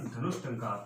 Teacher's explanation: टंकार। अब विसर्ग के बाद में ट वर्ग आया है तो विसर्ग का मूर्धन्य से कर देंगे